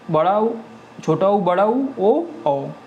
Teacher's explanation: पश्च स्वर जो इसमें जीभ का पीछे वाला भाग प्रयुक्त होता है इनको बोलने में। तो बड़ा ऊ, छोटा ऊ, बड़ा ऊ, ओ औ, ये हो गए आपके पश्च स्वर।